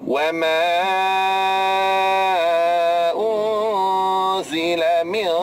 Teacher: apabila nun mati bertemu dengan huruf qaf, qaf adalah huruf isti'la, maka tuan-tuan sekalian dengung tu mesti kena tebal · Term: ikhfa haqiqi